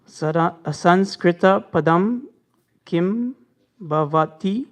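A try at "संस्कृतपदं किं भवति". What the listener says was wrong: Bhavati. Correct.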